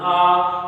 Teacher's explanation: आ का उच्चारण जब हम कर रहे हैं तो मुंह की स्थिति सबसे ज्यादा खुलती है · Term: विवृत